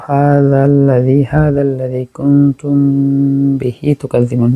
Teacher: মিম সাকিনের পরে বা আসছে ইখফা শফবি, গুন্না হবে